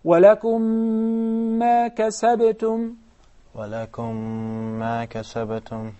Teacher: Even though we have two separate words and we have two separate memes, but whenever we read them, we ended up reading them as one. That is basically idgham, or insertion, or merging.